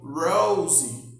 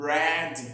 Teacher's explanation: A letra R em inglês ela é conhecida como R em corda ou R caipira, alveolar. Você tem que dar uma dobrada na língua para cima para falar assim, ó, R.